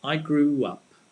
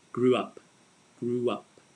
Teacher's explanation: you'll notice if you're listening carefully that we actually pronounce the w